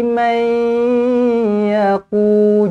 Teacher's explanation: nun kosong berjumpa dengan ya, kena senyum, dengungkan dengan 2 harakat idgham ma'al gunnah